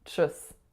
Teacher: And the final syllable is chus. So a ch sound followed by a schwa followed by an s.